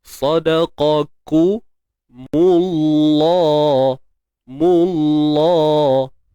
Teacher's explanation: Kalimah Allah ini kita baca dengan tebal. Sebab apa tebal? Sebab sebelumnya berbaris hadapan